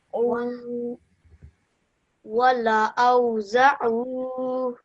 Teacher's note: Make sure you stretch the O out again because of the waw madda.